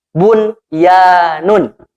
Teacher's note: khusus bacanya tidak di idghomkan tetapi disini nunya dibaca jelas